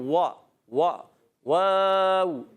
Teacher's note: واو کی ادائیگی ہوتی ہے ہونٹوں کی گولائی سے، دونوں ہونٹ گول کر کے